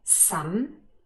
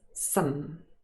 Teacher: usually this word is not stressed and it occurs in its weak form with the schwa